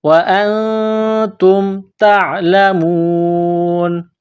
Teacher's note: جب اس آیت پر سٹاپ کریں گے، وقف کریں گے تو نون کو سائلنٹ کریں گے